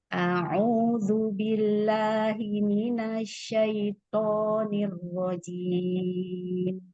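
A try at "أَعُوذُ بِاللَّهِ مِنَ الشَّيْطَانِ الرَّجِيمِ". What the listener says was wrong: Untuk Hamzah, lainnya Ahsan. Coba untuk Hamzah, tahqiqkan lagi. Jelaskan lagi Hamzah.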